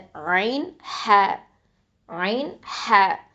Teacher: இது ரெண்டும் வசத்துல் ஹல்க்கு, நடுத்தொண்டையிலேருந்து வரும்